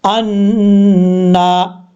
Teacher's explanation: یہاں پہ نون کے اوپر شد ہے، جب بھی نون کے اوپر شد آئے گا تو غنہ کیا جاتا ہے. ایک الف کی مقدار، نون کے اوپر کھڑا زبر ہے، ایک الف کی مقدار اس کو لمبا کر کے پڑھیں گے